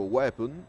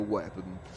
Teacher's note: inglese, quindi la parola weapon, ed effettivamente si pronuncia proprio weapon, un po' la O viene un po' elisa, quindi viene un po' tolta